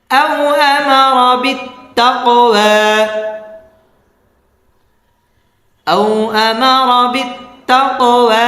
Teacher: أو أمر بالتقوى أو أمر بالتقوى আও জবরের বাম পাশে জজমাল ওয়াও লিনের হরফ আও আমার রটা পুর হবে বিত্তা তা তাসদীদ ওয়ালা হরফ তা কফটা কলকলা হবে ওয়া খারা জবর একালিফ টেনে পড়তে হবে